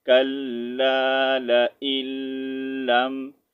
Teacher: یہاں پر جو ہے لام کو جو نون کو جو ہے ہم سائلنٹ کر دیں گے، ٹھیک ہے. یہاں پر نون کو نہیں ریڈ کریں گے، نون کے بعد جو ہے تشدید سائن آ رہا ہے لام پر، تو ہم اس کو ملا کر پڑھیں گے